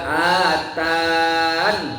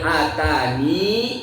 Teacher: Kalau wasal kalau berhenti fa atani Atau famaa atan Dua cara kalau waqaf Nunnya dibaca mati dan atau nunnya dibaca panjang Dua harokat mad thobi'i